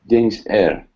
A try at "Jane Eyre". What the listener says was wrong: There's no S. There's no S. Jane Eyre.